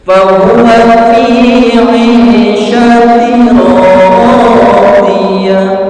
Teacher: Artinya idgham itu memasukkan. Maka di sini suara n-nya dimasukkan ke huruf ra, ya. Fahuwa fi 'ishatin, masuk huruf ra, bukan 'ishatin radiyah, bukan, karena sudah dimasukkan ke huruf ra. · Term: idgham bila gunnah